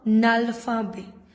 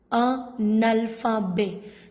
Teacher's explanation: the last consonant of the first word gives the sound of the first vowel of the next word. So, they are saying when the first word is ending on consonant and the other word, the next word is starting with vowel. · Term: linking